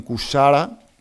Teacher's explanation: la realización de la CH como fricativa en cuchara por cuchara